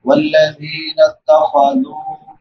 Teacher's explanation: والذین اتخذوا لال کے بعد واو مدہ ہے واو ساکن ما قبل ضمہ یعنی پیش ہے اس کو ایک الف برابر لمبا کریں گے